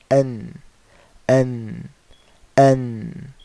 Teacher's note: noon is you have this tip of the tongue, okay, basically touching the gums right here.